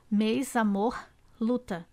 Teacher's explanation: o som das vogais em destaque São fechados como se elas fossem acentuadas com acento circunflexo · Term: fechadas